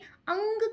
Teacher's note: अंग का जब हम उच्चारण करते हैं तो वो स्वर हमारी नासिका तक जाता है। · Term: नासिक्य